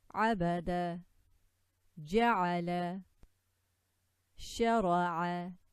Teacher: عين ع from the middle of the throat.